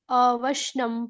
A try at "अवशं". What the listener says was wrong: अवशम है, अवशनम नहीं है माता जी, अवशम।